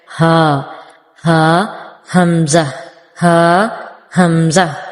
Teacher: ہا اور حمزہ یہ دونوں ہی سینے کی طرف سے نکلتے ہیں، تو سینے کی طرف پریشر فیل ہوتا ہے ہمیں، تھوڑے سے بھاری لیٹر ہیں، تو ان کو بہت لائٹلی نہیں پڑھنا، تھوڑا سا غصے میں آ کے پڑھنا ہے، جسے روبدار آواز میں کوئی پڑھتا ہے ہا، ہا حمزہ، ہا حمزہ۔